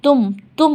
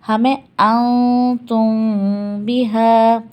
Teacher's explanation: ہونٹوں کو ہم ملائیں گے نہیں آپس میں. اگر ملائیں گے تو تم ہو جائے گا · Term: اخفا